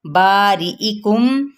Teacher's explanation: बा पे अलिफ मद्दा और री रा की ज़ेर को भी बारीक पढ़ना है, ई को भी वाज़े करना है